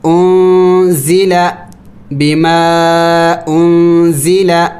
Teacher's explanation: نون ساکن ہے اس پر اخفا ہوگی